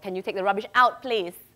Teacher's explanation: putting the stress on the last syllable